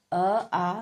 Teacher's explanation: यह कंठ द्वारा बोले जाते हैं।